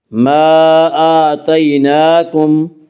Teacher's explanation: حمزہ کے اوپر کھڑا زبر ہے، کھڑا زبر قائم مقام ہے الف کے، اس لیے کھڑا زبر کو 1 الف کے برابر کھینچ کر پڑھیں گے